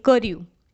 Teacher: ક ઉપર કઈ જ ભાર આવતો નથી એટલે એ લઘુ જ રહે છે